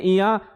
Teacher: तो आप जब बोलेंगे इया तो इसमें आपके नाक का आपको खुद ही एहसास हो जाएगा कि ये नाक से बोला जा रहा है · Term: नासिक्य